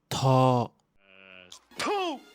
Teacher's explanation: Le T aspiré, qui fait le son ta, est très commun en thaï.